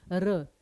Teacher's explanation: र का उच्चारण स्थान मूर्धन्य है लेकिन वो एक वर्ध ध्वनि के रूप में भी जाना जाता है।